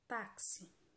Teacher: a palavra taxi é paroxítona já que a penúltima sílaba é a mais forte